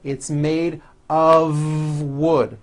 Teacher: of wood it's not a f wood with an unvoiced F it's all voiced and it's all connected